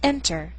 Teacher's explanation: The stress is on the first syllable, not ER.